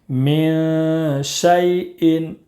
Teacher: میم نون زیر من، شین یا زبر شی، من شی، حمزہ دو زیر ان، من شیء، نون ساکن کے بعد حروف اخفا کے 15 حروف میں سے شین ہے، اس لیے نون ساکن کی آواز کو ناک میں چھپا کر پڑھیں گے۔